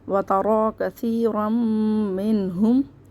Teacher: یہ سا کو نرمی سے پڑھیں گے، زبان دانتوں سے باہر لا کے · كَثِيرًا دو زبر کو ہم میم سے ملا کے پڑھ لیں گے